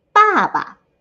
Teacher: it's the four tone the falling tone